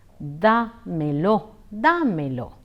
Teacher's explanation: In the expression damelo, the accent falls on a of da. Hence, it is pronounced as dámelo, dámelo.